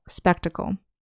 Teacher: when we say spectacle, the accent is on the first syllable